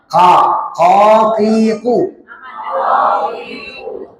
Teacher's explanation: Kemudian huruf qof itu keluarnya di pangkal. Pangkal di jangan pangkal tenggorokan, Ibu.